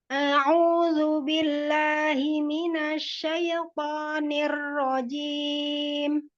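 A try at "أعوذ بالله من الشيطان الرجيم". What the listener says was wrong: Masih ya kayaknya karena intonasinya cepat ya. A'udzu billahi minasyaitonir rajim. Coba lebih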